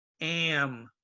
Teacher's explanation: now here you have the ah but it's before the m if you have a before m or n it gets into the nose it's called nasal